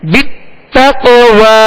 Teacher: قاف کون سے حروف میں سے ہے, حروف قلقلہ میں سے, لہذا کیا کریں گے, قلقلہ کریں گے. آواز میں جنبش ہوگی, آواز لوٹتی ہوئی آئے گی.